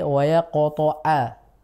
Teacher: ainnya kurang sempurna jadi masih seperti hamzah